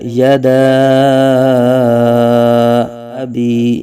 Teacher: حروف مدہ کے بعد حمزہ دوسرے کلمے میں آ رہا ہے، یہاں مد منفصل ہوگا